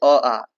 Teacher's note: अ, आ कंठ से बोला जाता है। कंठ के गले से।